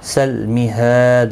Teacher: ہا الف مدہ ہے، ایک الف کی مقدار کے برابر کھینچ کر پڑھیں گے